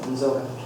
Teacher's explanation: the y is hardened to z after nasal. So this prefix drops the vowel, and then when these two become adjacent, the y becomes z.